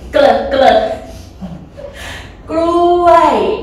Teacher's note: This word is dangerous if you pronounce not correct. กล้วยกล้วยกล้วย falling tone.